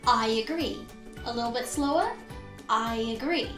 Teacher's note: Can you hear that intruding y sound?